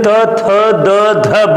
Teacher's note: यदि हम जब त, थ, द, ध बोल रहे हैं, इस कंडीशन में जो हमारा जिह्वा है हमारे दांत को स्पर्श कर रही है, और जब हमारे दांत को जिह्वा स्पर्श कर रही है उसी को हम लोग कहते हैं दंत ध्वनियां या दंत वर्ड।